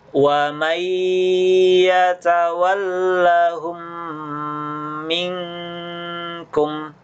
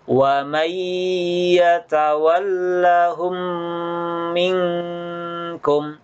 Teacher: Jadi di sini ada nun sukun ketemu ya, namanya idgham bigunnah. Jadi nun sukunnya dileburkan ke huruf ya dan didengungkan.